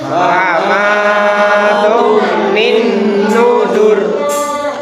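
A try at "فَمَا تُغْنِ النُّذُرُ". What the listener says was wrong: Famatughnin nudzur. Nah, cara pelafalan ghin, huruf ghin ketika disukun itu tidak boleh dikolkolahkan. Tidak boleh dibaca famatughnin, nggak boleh.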